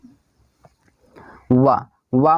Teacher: वा मैंने अभी कई बार बताया कि आपका ये क्या हो जाएगा, दंतोष्ठ है दोस्तों। ये वा जो होते हैं दंतोष्ठ भी है और आपका अंतस्थ व्यंजन भी है।